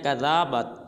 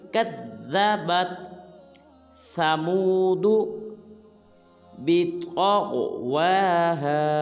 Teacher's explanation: کاف کو ذال مشدد کے ساتھ ملائیں گے اور ذال کو لمبا نہیں کریں گے۔